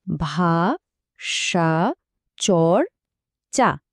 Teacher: কিন্তু যেই আমরা চর বলছি, র ব্যঞ্জনধ্বনিটা এসে উচ্চারণটাকে থামিয়ে দিচ্ছে, তাই এটা হলো একটা রুদ্ধ দল।